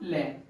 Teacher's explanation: पार्श्विक व्यंजन होता है जिन स्वरों के उच्चारण में हवा जीभ के बगल से निकले, मतलब गाल और जीभ के छूती हुई निकले, जीभ के बगल से हवा निकले, तो उसका जो एग्जाम्पल होता है वो क्या होता है आपका, ले।